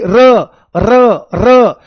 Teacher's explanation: जब र का उच्चारण किया जाता है तो जीभ में बहुत ज्यादा कंपन होता है और कंपन होने के कारण ही इसका जन्म होता है इसलिए देखो आप बोल के देखो एक बार र को बोल के देखो र को बोल के देखो आप बहुत बढ़िया बहुत बढ़िया बच्चे ठीक है इसको ध्यान से देखो समझो ध्यान से। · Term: प्रकंपित, कंपन जात व्यंजन